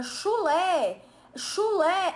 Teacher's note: uma palavra oxítona cuja sílaba tônica é a última